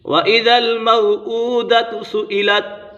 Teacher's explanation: یہاں پر الٹا پیش ہے، اسے حروف مدہ کی طرح ایک الف یعنی 2 حرکات کے برابر کھینچ کر پڑھیں گے